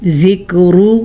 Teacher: ذکر را کو پر پڑھنا ہے کیونکہ را کے اوپر پیش ہے